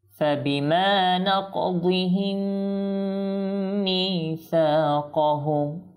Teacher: মিম সাকিনের পর কখনো যদি মিম আসে, সেখানে হবে আপনার ইদগাম, তো এবং গুন্নাও হবে। যেমন কি ফাবিমা নাকদিহিম মিসাকাহুম, দেখুন ইদগাম করলাম, গুন্না করলাম, ঠিক আছে।